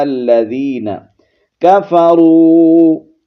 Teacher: واو حرف مدہ ہے، ایک الف کی مقدار کھینچیں گے